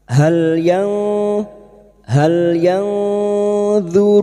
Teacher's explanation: bunyi nun sukun dibaca samar dan mendengung selama tiga harakat